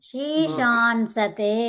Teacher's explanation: ఉన్న అనుస్వారాన్ని ఎలా పలకాలి? నామాదిరి. నాగా నకారంగా పలకాలి.